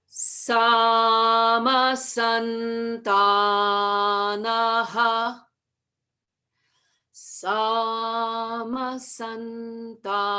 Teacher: We start in the middle and then sama, it goes up, and then back to the middle for sun, and then down ta, and then end up in the middle again for naha.